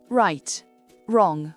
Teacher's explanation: Le W est muet devant un R.